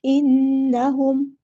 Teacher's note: नून पे गुन्ना ज़मानी हो रहा है, एक अलिफ के बराबर रुकेंगे